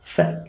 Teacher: the sound F is pronounced with the teeth the upper teeth and the lower lip